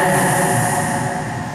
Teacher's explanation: Ujung lidah dengan gigi seri bawah. Az, keluarnya di antara gigi atas dan gigi bawah. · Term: zai